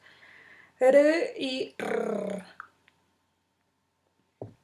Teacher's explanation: Y las vibrantes, cuya característica es una o varias oclusiones breves entre el ápice de la lengua y los alvéolos